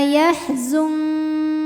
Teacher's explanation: karena nun sukun menghadapi huruf Kaf maka nunnya disamarkan siap-siap menuju Kaf disertai bunyi dengung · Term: ikhfa ab'ad